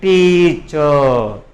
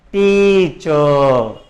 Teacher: word with the first syllable louder than the second.